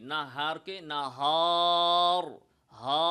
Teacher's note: common ভুল অনেকেই এই শব্দগুলোতেই না হারকে না হার হা তাহলে হা এর সাথে যখন আলিফটা আসে সে আলিফটাকে মোটা করে ফেলে আন্না হার এভাবে মোটা করে কি করতে হবে পাতলা করে বলতে